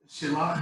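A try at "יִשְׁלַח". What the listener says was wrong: Yishalak. Yishalak. There is a Yud in front of there, which is a prefix. It was he shall. He shall. Remember we had the Aleph, which is I shall. This is he shall.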